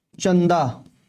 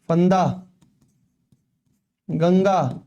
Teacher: इसको बोलने के बाद में जो हमारी सांस हैं वो कहां से निकलती है नाक से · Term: अनुस्वार